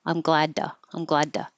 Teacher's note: if the t is coming after a voiced sound meaning it has vibration then it will be du